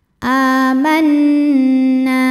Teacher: harakat qu a a mad badal sebab ada Hamzah yang dipanjangkan cara bacanya panjang a-nya dua harakat